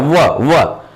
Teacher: तो आपका जो नीचे वाला होठ है दांत से टकराता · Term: दंत ओष्ठ वर्ण